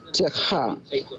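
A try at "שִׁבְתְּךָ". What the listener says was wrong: Techa, well done.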